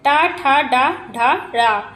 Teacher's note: ट वर्ग का उच्चारण स्थान होता है मूर्धा से होता है।